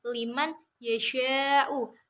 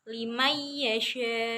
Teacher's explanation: bertemu dengan Ya tapi cara membacanya itu bukan Liman yasyau tapi dibacanya yaitu dengan ditasjidkan jadi Nun sukunnya itu hilang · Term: Idham bihunah